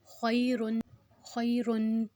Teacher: اس کو ہم بالکل بھی نہیں کھینچیں گے، اس پہ یائے لین ہے